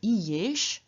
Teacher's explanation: we have inserted, in the first case, a y, which is the semi-vowel counterpart of I. So instead of having I-esh, we have I-yesh, which has the result that both reduplicative syllable and root remain nicely recognizable.